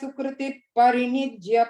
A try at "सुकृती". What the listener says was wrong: So third line la Sukruti, long E, Sukruti Parinijya, and fourth line la Murdhani, full dha.